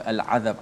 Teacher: Ain dekat mana? Dekat halqum. Lam dekat hujung lidah. Maka jauh. Sebab itulah kita dibaca dengan izhar. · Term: lam qamariyah